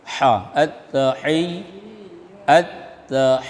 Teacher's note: Ha di tengah tenggorokan.